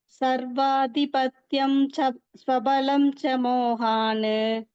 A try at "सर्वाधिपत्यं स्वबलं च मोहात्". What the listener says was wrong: அந்த இன்ன வந்து இத்துன்னு மாத்திக்கோங்க. அது சேர்த்து சொல்லும்போது மோகான் மத்தோன்னு இருக்கு. மோகாத்துன்னு மாத்திக்கோங்க.